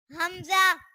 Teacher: हमजा भी हलक के नीचे वाले हिस्से से अदा होता है